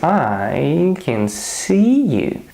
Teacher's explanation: I decided that I and see are stressed for me. So I put there just a bit more power, making it longer. So I used the prolongation, but it sounded pretty natural. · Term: stressed syllables